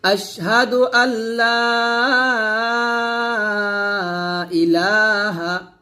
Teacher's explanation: আশহাদু আল্লা এখান থেকে লামকে ধরবে আর এলাতে তিনটান হবে